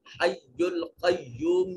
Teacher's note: قاف حرف مستعلیہ ہے، موٹا اور پر کر کے پڑھیں گے